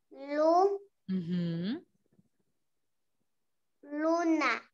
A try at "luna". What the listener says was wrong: Muy la bien, luna. Excelente.